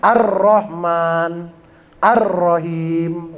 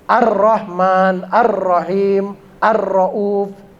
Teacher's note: itu alnya kan nggak ada, nggak kedengeran al ya, nggak kedengeran huruf l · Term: al-syamsiyah